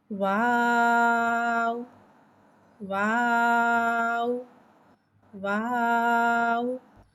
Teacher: वाव को होठों की गुलाई के साथ अदा करके पढ़ते हैं। वाव हुर्फ़े शफ़ाविया है, वाव दोनों होठों की गुलाई से अदा होता है।